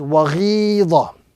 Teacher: with the prolongation and the emphasis being applied to the second letter because of the ya madda